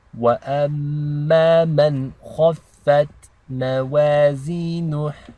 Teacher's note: the noon is not read with ghunna because it's followed by a kha, which is one of the letters of the throat. So this is called izhar.